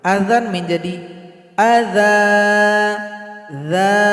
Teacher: Cara berhenti pada dua baris di atas atau fathatain, hilang satu, panjangkan dua ketukan. Azan menjadi adza, za, dipanjangkan dua ketukan.